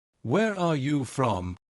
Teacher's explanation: The voice falls at the end. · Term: falling intonation